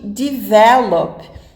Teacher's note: Mesma coisa com answer, listen, open e o caso de develop, que a sílaba tônica é a parte do meio da palavra